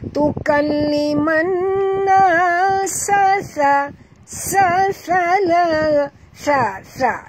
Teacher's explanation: ini bukan tha, ini sin, ini jadi bunyi sa, kasar